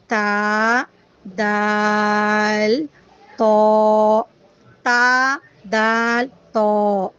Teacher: इनका मखरज है ज़बान की नोक सामने के 2 दांतों की जड़ में लगने से ता, दाल, तो अदा होते हैं। ये तीनों हर्फ नॉर्मली अदा होते हैं, सिर्फ आपको इनको ताकत से पढ़ना है ताकि ये सही निकले। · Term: हुरूफ़े नुतैया